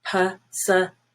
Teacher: Now for possibility, the stressed vowel shifts, or the syllable stress shifts, and it's now the second I, which is silver.